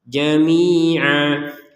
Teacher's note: Kalau berhenti maka panjangnya Ain dua harakat Jamia Kalau digabungkan dengan kata setelahnya maka dilihat Huruf apa setelahnya